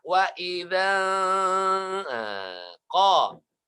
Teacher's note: Nun sakinah atau nun sukun bertemu huruf qaf menjadi ikhfa.